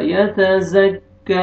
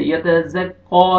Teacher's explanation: ٹھیک ہے، یہ زال نرمی سے پڑھنا ہے اور یہ زا زور والا. یتزکی کاف کو نرمی سے، یتزقا نہیں ہوگا